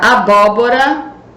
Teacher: você vai acentuar com acento agudo, que é som aberto no primeiro O